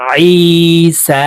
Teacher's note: আইনের উচ্চারণ হলকের মধ্যখান থেকে চাপ দিয়ে করবা